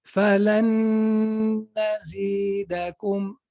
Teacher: So that means I have to merge the noon into the noon.